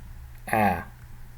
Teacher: So in Kalmyk and in many Oirat dialects, instead of an I, we have an A. So this is a open long A sound.